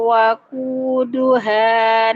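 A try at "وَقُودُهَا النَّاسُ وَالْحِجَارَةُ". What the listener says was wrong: Waquduhan jangan dipanjangin hanya. Waquduhan han jangan isba' ya.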